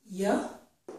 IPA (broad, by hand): j